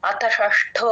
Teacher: అత తర్వాత చిన్న గ్యాప్ కూడా ఇవ్వకూడదు అతషష్టో వెంటనే తీసుకోవాలి ఎప్పుడైతే అష్టమోధ్యాయః ఏకాదశోధ్యాయః అంటే అచ్చులు వస్తాయో అప్పుడే గ్యాప్